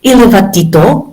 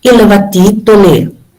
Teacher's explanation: But when we bring this progressive aspect high marker, the future marker to changes to high, like low to high. So iluvatito versus iluvatitole.